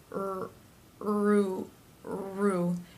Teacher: the tongue is up and pressed in the middle against the insides of the teeth for the are sound